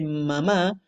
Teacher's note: cuando se tapan la nariz el sonido se acaba porque era el único lugar por donde podía salir el aire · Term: sonido nasal